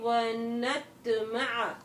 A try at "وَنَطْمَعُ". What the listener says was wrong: نَتْ لَا الطَّاء هَذِهِ لا تمدي ما في مد في مدود طبيعية